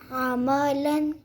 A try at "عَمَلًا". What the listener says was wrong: عین کے ساتھ پڑھیں گے۔ عملا